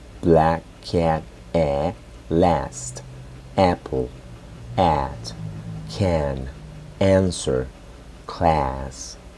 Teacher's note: sería una combinación entre una E y una A juntas